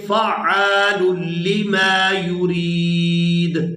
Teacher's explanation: اب یہاں پر آیت ختم ہو رہی ہے، وقف کریں گے تو وقف کی صورت میں دال جو ہے یہ ساکن ہو جائے گی، اور یہ جو دال ہے حروف قلقلہ میں سے ہے، حروف قلقلہ 5 ہیں، ان میں سے ایک یہ دال ہے۔ دال جب ساکن ہوگی تو یہاں اس پر قلقلہ ہوگا